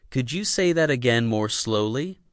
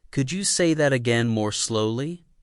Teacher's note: Match the rising tone on say and use gentle stress on slowly.